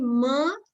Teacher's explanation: nasal sound uh what happens is there is constriction constriction right when i say ma the mouth is closer the airstream gets blocked and it then the air is released from the nose